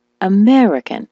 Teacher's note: the word American, as you know, is stressed on the me